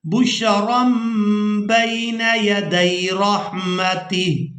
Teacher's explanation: تنوین میں جو نون کی آواز ہے اس کو ہم نے ختم کر دینا ہے، میم کی آواز کو شامل کر دینا ہے۔ یہاں پر آپ لوگ یہ میم دیکھ رہے ہیں، اب یہاں جو ہم میم کی آواز یہاں پر شامل کر رہے ہیں اس کو اقلاب کرنا کہتے ہیں، یعنی نون کو میم کے ساتھ بدل کر ادا کرنا۔